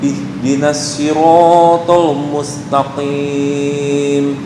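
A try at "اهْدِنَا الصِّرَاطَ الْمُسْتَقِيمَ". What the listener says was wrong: Ihdinas si ya. Ihdinas si. Yang saya garis bawahi sad. Ihdinas si. Di mana makhraj sad? Kayaknya perlu mengulang lagi ini makhraj ini. Nih sad. Sad, sin, za. Sad, sin, za. So ya, tengah naik ke atas yang disebut dengan isti'la. Ihdinas si. Apa beda antara sad dengan sin? Sin dibaca kasroh tetap ininya lebar, tengahnya lebar.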